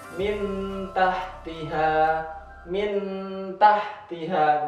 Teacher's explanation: ketika masuk ke suara nun mati itu seakan-akan mau langsung persiapan masuk ke huruf Ta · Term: Ikhfa